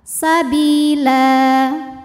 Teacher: sebab ada baris tanwin fathah yang kita berhentikan atau kita wakafkan cara bacanya baris duanya ini jadi satu jadi fathah dan dipanjangkan dua harakat